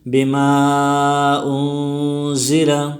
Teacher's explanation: یؤمنون، یؤمنون غلط ہے، یؤمنون، منون میں واو مدہ ہے، وہ ساکن سے پہلے پیش آئے ہیں تو اس کو بھی ایک الف کی مقدار کھینچ کر پڑھیں گے، یؤمنون۔ بما انزل، بما میں الف مدہ ہے اور مد منفصل ہے، اس کو 2 سے 3 الف کی مقدار کھینچ کر پڑھیں گے، بما انزل۔ انزل میں اخفا ہوگا، اس لیے کہ حروف اخفا میں سے نون ساکن کے بعد زا آئی ہے تو اس میں اخفا ہوگا۔